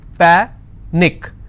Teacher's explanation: I will stress on pa and it's pronounced as panic